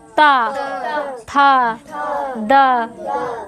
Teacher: दंत्य। जब भी हम ता वर्ग के वर्णों का उच्चारण करेंगे, ठीक है, तब हमारी जो जीभ होती है वो दांतों को छूती है।